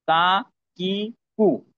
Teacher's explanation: 5 number মাখরাজ হলো জিহ্বার গোড়া থেকে একটু আগে, তালু, শক্ত তালুর সাথে লাগায়া। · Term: কাপ